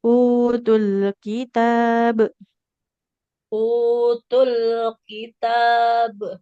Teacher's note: Lam sukunnya nggak boleh memantul.